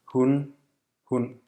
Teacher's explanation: For example, billigst, billigst, one unique phonological feature of Danish that other North Germanic languages don't have is called stød, This is like a glottal stop without complete closure of the vocal cords, resulting in what's described as a creaky voice.